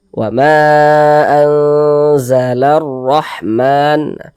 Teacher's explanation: Huruf ro juga dibaca tebal, dibaca tafkhim.